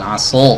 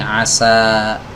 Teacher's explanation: SH ini kan huruf yang dibaca tebal Dia memiliki sifat istila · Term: huruf Shad